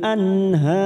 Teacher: nun sukun bertemu ha Idhar halq kita baca jelas